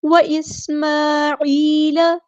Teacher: حرکات مد آئی ہیں، واسماعیل، سین کی ہم واضح کریں گے، حمزہ قاطعی ہے یہاں پہ تو اس کی آواز واضح آئے گی